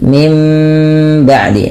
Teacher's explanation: Nah, berarti di sini dirubah bunyinya dari nun menjadi huruf mim ketika bertemu dengan huruf ba. Apabila ada nun mati bertemu dengan ba, suara nunnya dirubah menjadi suara mim ya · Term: iklab